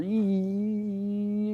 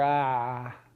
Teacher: for E, your tongue is sort of tense and it's up there at the top of your mouth. And then for ah, your tongue drops, right? In fact, drops so far that it drags your jaw down with it, right?